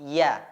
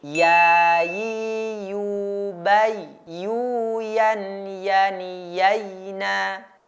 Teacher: dengan merapatkan punggung lidah kita atau lidah bagian tengah bertemu atau menempel dengan langit-langit atas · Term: huruf ya